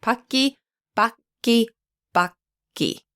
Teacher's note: the only difference has to do with the middle consonant, which is a velar, unvoiced, plosive. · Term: K sound